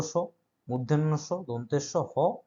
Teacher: শীষ দেওয়ার মতো শব্দ হয়, ঠিক আছে, শীষের শব্দ হয়, তাদেরকে বলা হচ্ছে তোমার উষ্ম ধ্বনি।